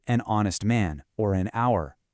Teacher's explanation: The H is completely silent, so you're starting the word with an O sound.